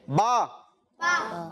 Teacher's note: मिलते हैं। बा, दोनों होंठ मिल रहे हैं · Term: हरफे शफवी